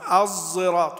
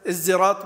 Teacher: انما المقروء في المتواتر هو الاشمام خلط الصاد بالزاي